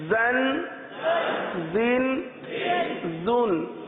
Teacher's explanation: زا کی آواز آئے گی کس طرح؟ سیٹی کی طرح. دونوں دانت کو آپس میں ملاتے ہیں زا میں، اور زبان کی نوک نیچے لگاتے ہیں، نیچے کے دانتوں کے حصے پر لگاتے ہیں.